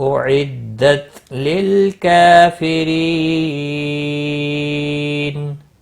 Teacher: کا ساکن کو ہلانا نہیں، لل اسلام کو بھی ہلانا نہیں۔ کاف کے اوپر کھڑی زبر ہے، ایک الف کے برابر کھینچ کر پڑھیں گے۔ ری یا مدہ ہے، ایک الف کے برابر کھینچ کر پڑھیں گے، اور را کو باریک پڑھیں گے زیر کی وجہ سے۔